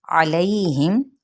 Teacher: आइन को वस्ते हलक से